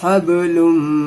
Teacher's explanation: यहाँ पे गुन्ना करेंगे, हब्लुम में थोड़ा सा रुकना है